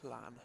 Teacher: If you put your tongue to the roof of your mouth and kind of go out the side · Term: double L sound